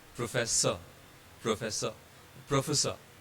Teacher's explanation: R doesn't have E following it, so R becomes silent and we just pronounce it as professor